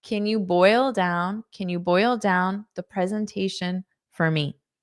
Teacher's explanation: Now native speakers may say canya ya and pronounce it as yah instead of you